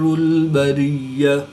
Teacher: گول تا کو وقف کی حالت میں ہاں ساکن سے تبدیل کر کے پڑھیں گے